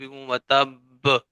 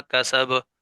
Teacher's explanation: جس حرف کے اوپر شد تھی ہم نے اس پر قلقلہ زیادہ کیا، اور جس حرف کے اوپر صرف جزم تھی ہم نے اس پر قلقلہ کم کیا